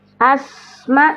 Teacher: sin punya sifat sofir ya. Ada bunyi ketajaman suara ya. Ketajaman suara ya. Karena melewati ruang yang sempit itu namanya sofir.